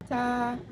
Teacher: konsonan paduan, apikodental, tak bersuara, non-aspirasi